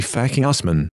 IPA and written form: faˈkɪh ʊsˈman (Fakih Usman)